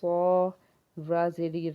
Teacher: रा को बारीक पढ़ेंगे क्योंकि इसके नीचे जेर है